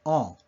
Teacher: this is the most open vertically of the 4 nasal sounds